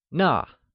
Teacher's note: That translates as 那, which is also pronounced using the falling tone.